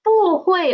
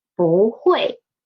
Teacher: It is 不会 because of the tone sandy of 不, tone sandy of 不. When 不 is before a fourth tone syllable, it will change to second tone.